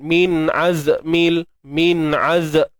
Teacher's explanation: Cuma kena ingat huruf zai ni dia bersifat rakhawah. Jangan tahan terlalu awal sangat.